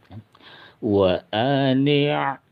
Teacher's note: Wa ani', tadi kan ini ain ya, jadi terasa ainnya ya, bukan hamzah